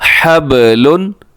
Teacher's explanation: آگے چلی گا جی، حا زبر با حب، لام دو پیش لن، حب لن، با کو ہلانا ہے، با قلقلہ ہے